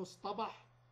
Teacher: اصطاد كان أصلها اصطاد، ومنه اصطبح كان أصلها اصطبح بالتاء، فتحول التاء إلى طاء بقوة حرف الاستعلاء الصاد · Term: إبدال